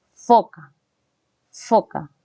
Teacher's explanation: los dientes los incisivos se juntan con el labio inferior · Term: fono efe